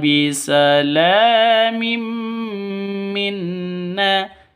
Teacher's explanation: Salam minna salamin la panjang dua ketukan di sini karena ada alif ya ada alif diawali dengan fathah mad asli atau mad th mad th'iibi ihbit bisalamim minna tanwin bertemu dengan mim cara bacanya masuk ke mim disertai dengung dua ketukan · Tanwin bertemu dengan mim. Cara bacanya masuk ke mim disertai dengung 2 ketukan karena bacaan idgham bi gunnah.